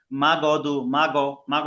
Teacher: ভাই অনেকে এখানে ভুল করে কি জানেন মাগদু মাগো মাগো বলে মাগো বললে কি হবে কলকলা হয়ে যাবে ধাক্কা হয়ে যাবে · মা গ বললে কি হবে? কলকলা হয়ে যাবে, ধাক্কা হয়ে যাবে, ধরে ধরে পড়তে হবে।